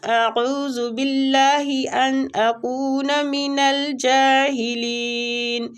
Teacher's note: باللہ اللہ کی لام کو ادھر باریک پڑھیں گے زیر کی وجہ سے